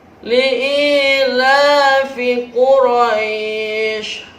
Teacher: Quraisy ada mad tabi'i di akhir kalimat, namanya mad arid lis-sukun. Panjangnya boleh 2, boleh 4, dan boleh 6 harakat.